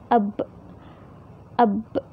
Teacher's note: Seharusnya itu kita, bahasa lembutnya apa ya, mingkem. Jadi ya kedua bibir kita itu bertemu dulu gitu. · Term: asyafatain